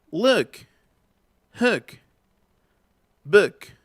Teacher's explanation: Esta es como una U, pero más cerradita. Paramos la trompita así.